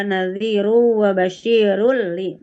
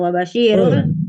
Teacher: 1 lam dan 2 ro. Jadi cara membacanya dimasukkan atau dilebur tapi tanpa disertai gunah. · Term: idgham bila gunah